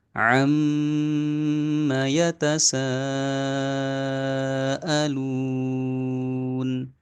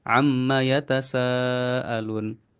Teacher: mim tasdid maka harus diberi haknya untuk berdengung dalam durasi yang paling tinggi